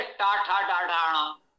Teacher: टव का उच्चारण स्थान मूर्धा है